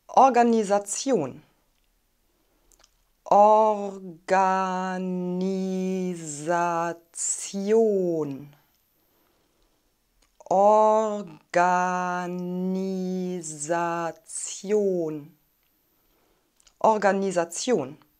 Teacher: Die Betonung liegt auf der Endung Tion. Am Anfang haben wir ein offenes O.